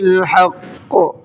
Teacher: حق قاف کو منہ بھر کے پڑھیں گے اور ڈبل پڑھیں گے